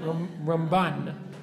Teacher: When we say Ramban, we always put the stress on the second syllable